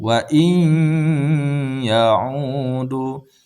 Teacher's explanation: Jadi nun ini kita hilangkan dan langsung kita masukkan ke huruf ya. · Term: Idgham bigunah